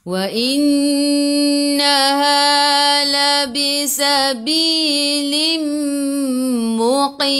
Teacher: Wa innaha nun ada sabdu, kena tekan. Dengung wajibul gunnah.